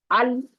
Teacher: ال کو پکڑ کے رکھنا ہے، چھوڑنا نہیں، کلکلا نہیں ہونا چاہیے